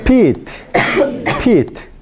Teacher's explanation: hay aspiración porque se mueve el agua